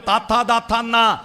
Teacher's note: ആ നാവിന്റെ അറ്റം പല്ലുമ്മ തൊട്ടിട്ട് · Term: ദന്ത്യവും